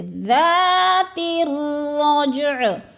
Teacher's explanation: اکثر اس طرح بھی مسٹیک کر جاتے ہیں، رجع پڑھ جاتے ہیں، رجع بھی نہیں پڑھنا، رجع یعنی دونوں کو جیم کو بھی اور عین کو بھی ساکن کرنا ہے، اور رج جیم پہ قلقلہ بھی کرنا ہے، یعنی ہلا کے پڑھنا ہے، کیونکہ جیم ساکن ہے اور حروف قلقلہ میں سے ہے